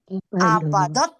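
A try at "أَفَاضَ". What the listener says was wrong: Fa-nya panjang.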